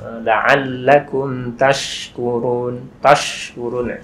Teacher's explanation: shin itu kan dari tengah lidah